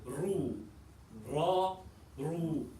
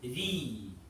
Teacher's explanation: So the kasra is very light, making the ra light, and the opposite when fatha and dhamma appears.